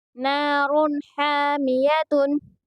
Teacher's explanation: ہا کو درمیان حلق سے ادا کریں گے